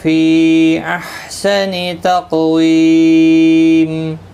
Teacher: سا الف مدہ بھی ہے، الف مدہ ہے، 1 الف کی مقدار کے برابر کھینچ کر پڑھیں گے۔ فی یہاں پر مد منفصل ہے، 3 الف کی مقدار کے برابر کھینچ کر پڑھیں گے